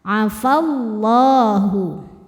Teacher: lam jalalah dibunyikan secara tafkhim karena harakat huruf sebelumnya fathah